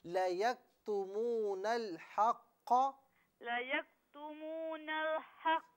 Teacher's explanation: نون کو لام کے ساتھ جب ہم ملا رہے ہیں تو لام کو پر نہیں پڑھنا, اسے یوں پڑھیں لَيَكْتُمُونَ الْحَقَّ, لَيَكْتُمُونَ الْحَقَّ نہیں نل نہیں نل, لَيَكْتُمُونَ لَيَكْتُمُونَ نہیں, لام کو بالکل یعنی نارمل پڑھنا ہے, پر نہیں پڑھنا.